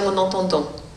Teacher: le a au milieu va devenir nasal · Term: nasalisation